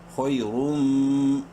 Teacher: خا کو منہ بھر کے پڑھیں گے لیکن شارٹلی کیونکہ نیکسٹ یا لین ہے، خو یا زبر خوئی، را میم دو پیش روم، را کو منہ بھر کے پڑھتے ہوئے میم سے ملائیں گے